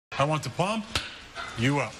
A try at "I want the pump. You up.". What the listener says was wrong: We want the pump. You up. You put the emphasis on the wrong syllable.